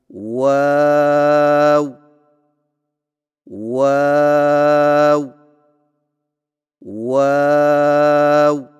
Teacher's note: پھر سے ہونٹوں کو چونچ کی مانند گول کرتے ہوئے باریک آواز میں پڑھیں